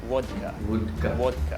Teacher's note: V's and W's. V's and W's sound the same in a Russian accent, and it's sort of a cross between the two.